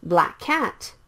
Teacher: the same K sounds so you can skip one of the K sounds